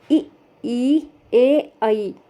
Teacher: अगर आप उच्चारण करेंगे तो हमारी जीभ का अगला हिस्सा जो है इसमें ज़्यादा इस्तेमाल हो रहा है। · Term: अग्रस्वर